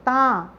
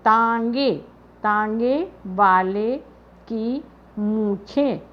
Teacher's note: जब ता के ऊपर चंद्रबिंदु लग जाती है तो ता पढ़ते हैं। ता, इसका उच्चारण बोलने से लग रहा है कि ता जब पढ़ रहे हैं तो नाक से आवाज़ आ रही।